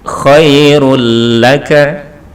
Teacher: tanwin kemudian berikutnya ada huruf lam maka cara membacanya lam ini tanwin ini masuk kepada huruf lam tanpa berdengung tanpa ada dengung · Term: Idgham bilagunnah